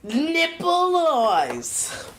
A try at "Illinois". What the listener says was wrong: You don't pronounce the S in Illinois.